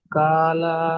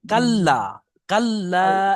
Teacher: লামের উপরে তাজদিদ আছে তাজদিদ লামটা প্রথমে কাফেরের সাথে একবার হবে কাফ লাম জবার কাল তারপর লাম আলিফ জবর লা